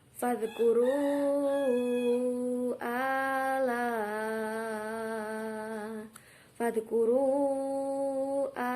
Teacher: bacaan mad jaiz munfasil dibaca 5 harokat atau 2,5 alif karena mad tabi'i bertemu dengan huruf hamzah dalam 2 kalimat terpisah.